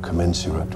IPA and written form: kəˈmen.sjər.ət (Commensurate)